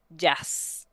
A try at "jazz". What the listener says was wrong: More of a longer ah sound, jazz.